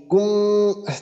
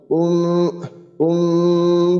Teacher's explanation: দুই ঠোঁট একবারে চাপ দিয়ে ধরবো না, বরং দুই ঠোঁটের মাঝখানে এতটুকু পরিমাণ ফাঁকা রাখবো যে আমি নিজে বুঝতে পারি যে দুইটার ভিতরে ফাঁকা আছে। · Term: ইকফা